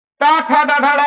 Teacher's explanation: जीभ सीधी जीभ से कर रहे हो, मुड़ी हुई जीभ से कर रहे हो, मुड़ी हुई जीभ से, जहां जीभ मुड़े और तलवे के ऊपर पट से मारे, वहां पर क्या हो जाएगा, मूर्धत्व व्यंजन हो जाएगा। · जीभ का अगला सिरा मुड़े, मुड़कर निचला भाग ऊपर तलवे मारे, और जैसे मारेगा वो उच्चारित हो जाएगा।